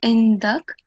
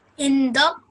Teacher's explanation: when you pause, as you know, the last stroke on the last letter, you don't pronounce it, so it will be indak.